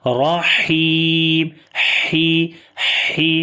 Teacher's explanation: ہمس جو ہے وہ زیادہ واضح ہے، اور اگر یہاں پر ہا کے نیچے زیر ہے تو اس وقت بھی اس کے اندر سانس جاری ہوگا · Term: صفت ہمس